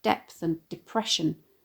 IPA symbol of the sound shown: d